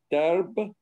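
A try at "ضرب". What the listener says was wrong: Very good, very good, very good.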